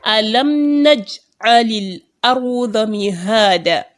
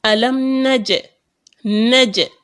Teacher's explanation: However, if I'm to violate this rule now, that is, if I'm to apply the rule of qalqalah, I will make a certain echo on the jim. Instead of tying up the jim immediately, there will be an echo.